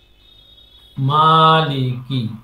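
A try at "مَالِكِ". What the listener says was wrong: লি এ টানবে কেন?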